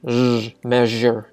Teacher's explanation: Sometimes some people will transliterate zh as zh, you know, because sh is sh, so zh logically would be zh, which is kind of like the voiced version of sh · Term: zh sound